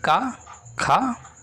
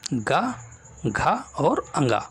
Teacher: पहला और दूसरा वर्ण होगा वो अघोष वर्ण होगा, और तीसरा, चौथा और पांचवा वर्ण जो होगा वो घोष वर्ण होगा